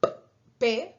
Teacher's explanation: obstruir el aire por ejemplo cuando hacemos una una p verdad los labios están reteniendo el aire y después dejas que el aire salga como una explosión